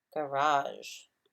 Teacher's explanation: the first syllable is actually it's a schwa so it's a little different